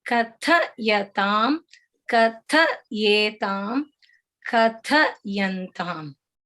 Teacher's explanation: the Mahaprana is on the second syllable, not on the first syllable. So you have to say each syllable well spaced out.